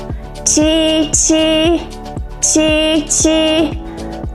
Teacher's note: Qi is a palatal consonant and it needs a medial as a glide to form a complete syllable.